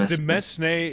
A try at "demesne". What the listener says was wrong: The S is silent.